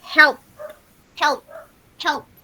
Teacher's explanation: El sonido que al final produce la P es más aire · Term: voiceless